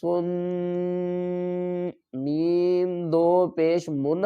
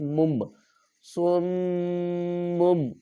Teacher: میم جو ہے وہ مشدد ہے، اس پر غنہ کریں گے۔ صاد میم پیش سن، میم دو پیش من ہم نے نہیں پڑھنا ہے، اس کو پڑھنا ہے میم دو پیش مم، سمم۔